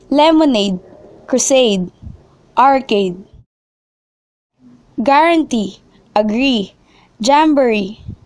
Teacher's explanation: have the primary stress actually placed on the suffix